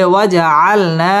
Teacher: ওয়াও ঠোঁট গোল করে উচ্চারণ করতে হবে